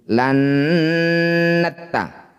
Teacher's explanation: Bunyi nun dengungkan 2 harokat. Saat dengung lisan kita sudah bersiap bunyikan tak. · Saat dengung lisan kita sudah bersiap bunyikan tak. La, ujung lidah sudah nempel di pangkal gigi seri atas. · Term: ikhfa aqrab